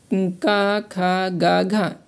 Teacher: कंठ में आ जाए का, खा, गा, घा ये सभी कंठ ध्वनियाँ हैं।